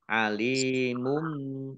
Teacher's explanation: Dhammah tanwin bertemu dengan huruf ba bacaan iklab dibaca membalik, mim tanwinnya dibaca mim, alimum bil ditandai mim, ada mim kecil berdiri.